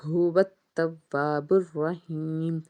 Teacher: ہا کو جب پڑھیں گے تو آواز سینے کی طرف سے آئے گی سانس کے ساتھ